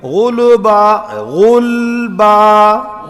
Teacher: لام پر آواز جاری ہوئی